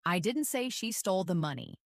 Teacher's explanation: First, emphasize the word I. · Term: sentence stress